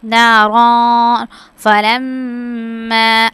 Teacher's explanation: اچھا جیم پر جو ہے نا وہ کنڈیشن ہے کہ ہم یہاں پہ رک بھی سکتے ہیں اور جو ہے ہم وقف کر سکتے ہیں اور ملا کے بھی پڑھ سکتے ہیں، تو ملا کے پڑھنا زیادہ بہتر ہے. تو یہاں پہ نارن پہ جو ہے وہ اخفا کی صورت میں ہم غنہ کریں گے